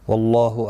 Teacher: اللہ کا لام زبر کی وجہ سے پر پڑا جائے گا. اس کے اوپر کھڑی زبر بھی ہے ایک الف کی مقدار کے برابر کھینچ کر پڑھیں گے.